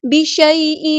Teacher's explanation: یا ساکن سے پہلے زبر ہے تو نرمی سے بولیں گے ، بشیء نہیں پڑھیں گے، بشیء، اسے کہتے ہیں نرمی سے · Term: مد لین